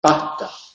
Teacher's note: La aspiración, en este caso, la consonante es sustituida por una aspiración glotal.